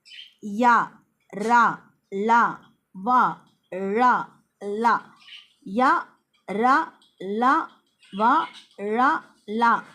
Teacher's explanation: இந்த இடையின மெய்யெழுத்துக்கள் எங்கிருந்து பிறக்குதுன்னா கழுத்தை இடமாகக் கொண்டு பிறக்கிறது